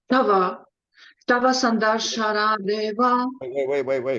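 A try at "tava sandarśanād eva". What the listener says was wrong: It's just both syllables are treated equal. It's just Tava. Not any emphasis on either syllable.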